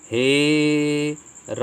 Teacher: आ का मात्रा को मतलब 3 प्लुत स्वर के समान बढ़ा करके इसको बोला जाएगा